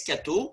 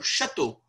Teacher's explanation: So Castel became something like Castel, which became Cateau, which became, in the north of France, it still is Cateau. And in Paris, that palatalized to ch, so Chateau